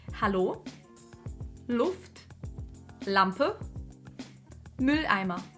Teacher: немецкая L отличается от русской L в артикуляции. В немецком язык подходит к небу вертикально, в русском горизонтально.